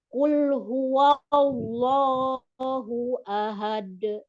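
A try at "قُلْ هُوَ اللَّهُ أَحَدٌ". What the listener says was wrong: Nah, dalnya Bu, masih kolkolanya masih kerasa berat. Hu ahad. Tapi hu ahad. Ahad.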